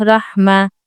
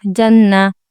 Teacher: जब ता मुदवरा पर वफ करी जाएगी तो हां पढ़ी जाएगी।